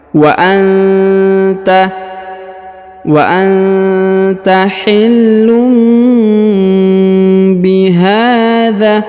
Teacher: Wa anta, nun sukun bertemu ta, maka kita dengungkan dan kita samarkan